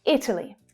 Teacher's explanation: The first syllable is the stressed syllable. The other two reduce.